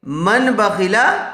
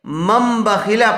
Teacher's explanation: تو تنوین یا نون ساکن کے بعد با آئے تو نون کو میم سے بدل کر غنہ اور اخفا کے ساتھ پڑھیں گے · اس کو دھیان سے دیکھیے میم میم زبر مم، پہچان اور علامت کے طور پر ایک چھوٹا سا میم لگا دیا جاتا ہے تاکہ معلوم ہو جائے کہ یہاں پر اقلاب ہے، یہاں نون ساکن کو میم سے بدل دیا گیا ہے۔ میم میم زبر مم، میم نون زبر من نہیں پڑھیں گے بلکہ میم میم زبر مم، با زبر با، ممبا۔